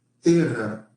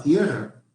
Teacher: Pero la E tónica pasó a un diptongo